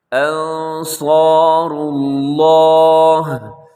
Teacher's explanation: لفظ اللہ بھی موٹا ہے، را بھی موٹا ہے، اور صاد بھی موٹا ہے، اور اس کے ساتھ جو الف ہے وہ بھی موٹا پڑا جائے گا، یعنی 3-4 موٹے موٹے حروف ساتھ اکٹھے آ گئے۔